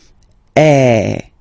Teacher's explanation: have to produce is e so it's really open I mean the sound is really open and normally your mouth should be opened a little bit more